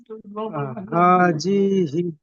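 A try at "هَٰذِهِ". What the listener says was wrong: হি টান দেন, হাজিহি।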